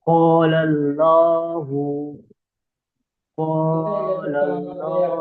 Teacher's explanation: আল্লাহ শব্দের লামকে পুর অর্থাৎ ল পড়তে হয়। · আলিফের ডান দিকে জবর আছে, আলিফ মাদ্দা বলে, ওটা এক আলিফ টান দিয়ে পড়তে হয়। আর লামের উপরে জবর আছে, ওটা হারাকাত, ওটা টান না দিয়ে তাড়াতাড়ি পড়তে হয়।